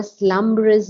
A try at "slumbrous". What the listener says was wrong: Yeah, we have to be careful on these things like slumbrous because it's only two beats, not slumberous, but slumbrous.